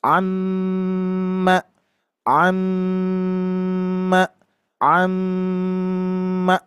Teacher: Ingat jarak mim bertasdid guna musyaddadah harus ditahan, jangan tergesa-gesa.